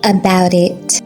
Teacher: Notice the T sounds in about it. Try tapping your tongue softly to keep it light.